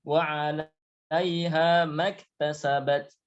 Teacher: kalau langsung ma-nya dibaca pendek karena bacaannya langsung ya disambung dengan kalimat setelahnya